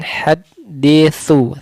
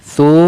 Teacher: Kemudian haditsu, su makhrajnya ujung lidah, su makhrajnya ujung lidah dikeluarkan